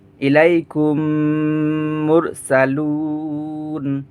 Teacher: মিম সাকিনের পরে মিম আসলে ইদগামে সগির মিসলাইন হয়, গুন্না করা লাগে।